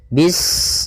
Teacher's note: Pada bacaan bis ini sempurnakan huruf sinnya. Ketika sinnya sukun, ini ada sifat shafir, dia harus kita alirkan nafasnya. Bis, nah, seperti itu sempurna, baru baca mi.